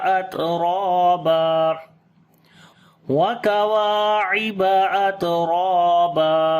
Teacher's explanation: تا کے اوپر صفت شدت اور ہمس دونوں کریں گے